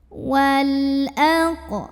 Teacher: lam sukun ini dibunyikan dengan jelas ya. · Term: alif lam qamariyah